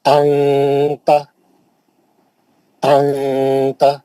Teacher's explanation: کیسا کریں گے؟ نون کی آواز کو ناک میں لا کے چھپا لیں گے اور غنّے کر کے پڑھیں گے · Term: غنّہ